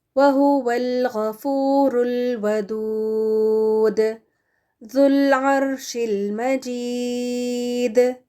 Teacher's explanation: دال ساکن جب ہم بنا دیتے ہیں اس کو، تو یہاں پر قلقلہ بھی کریں گے